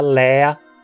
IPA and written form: lɛːɐ (vazio)